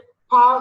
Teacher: there is a complete closure and a sudden release. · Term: plosive